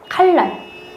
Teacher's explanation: 리을이 니은한테 영향을 줘서 리을로 바뀌는 거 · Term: 유음화